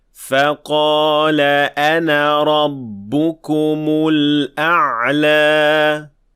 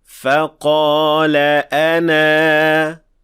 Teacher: Notice how we extended the alif at the end for 2 counts.